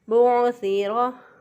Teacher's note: रा की अदायगी में रा को पुर पढ़ेंगे, मोटा पढ़ेंगे, क्योंकि रा के ऊपर ज़बर है। तो रा के ऊपर ज़बर हो या पेश हो, रा को पुर पढ़ेंगे। · सा जो है इसको भी नरमी से पढ़ेंगे और इसकी अदायगी में, सा की अदायगी में सीटी जैसी आवाज़ नहीं आएगी। बुअसिरा। और रा की अदायगी में रा को पुर पढ़ेंगे, मोटा पढ़ेंगे, क्योंकि रा के ऊपर ज़बर है।